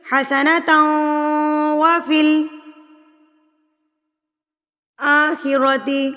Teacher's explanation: اب ہم نے تنوین کو ملانا ہے واو کے ساتھ. جب آپ تنوین کو واو کے ساتھ ملائیں گے تو غنہ کی طرح ملائیں گے، یعنی کہ ناک میں آواز لے کر جائیں گے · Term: ادغام مع الغنہ